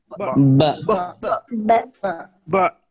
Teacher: এটা কিন্তু বয়াকার বাও না, আবার ব ওকার বো এরকম না, দুইটার মাঝামাঝি বা।